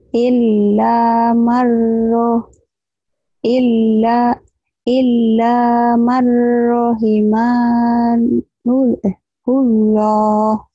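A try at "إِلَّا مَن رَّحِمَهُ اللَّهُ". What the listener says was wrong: ya, tapi nggak ada yang panjang rahimannya ya lagi. Marnya nyamar dulu, mar gitu.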